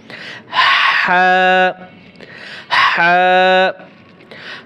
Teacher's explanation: এটা হচ্ছে ছোট হা অথবা হাই হত্তি, গলার ভিতরে ফ্যাস ফ্যাস আওয়াজে বলতে হবে।